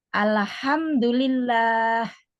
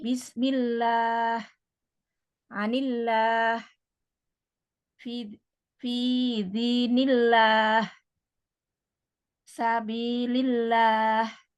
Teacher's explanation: Lafal Allah yang didahului huruf yang berharokat kasroh, maka dibaca tipis atau tarkik.